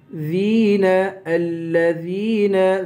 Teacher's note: ذال کو یا سے ملائیں گے، یا کو ایک الف کے برابر کھینچ کر پڑھیں گے